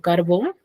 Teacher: Su sílaba tónica está en bon, que es la última sílaba, y termina en n.